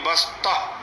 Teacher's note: تو وقف کی حالت میں تا ہا سے بدل جاتی ہے، ہا پڑھی جاتی ہے۔ تو ابھی پڑھیں گے بسطہ، تا ہا زبر تہ۔